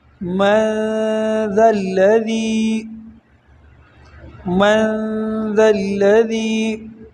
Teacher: یہ ذال جو ہے اس کو نرم پڑھنا ہے، سختی کے ساتھ نہیں پڑھنا